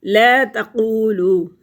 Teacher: لا تقولو، قو قاف موٹا پڑا جائے گا، زبان کا جو پچھلا حصہ ہے اٹھتا ہے اور اوپر تالو کے نرم حصے کو لگتا ہے تو قاف ادا ہوتا ہے۔